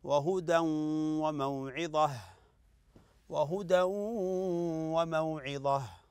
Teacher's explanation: تنوين اتى بعد الواو الواو من حروف الادغام بغنه